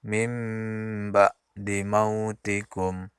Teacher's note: Kemudian mim ba'di mautikum, ada nun mati bertemu dengan ba, maka hukumnya iklab, maka bunyi nun langsung masuk ke bunyi mim, maka bacaannya mim ba'di mautikum.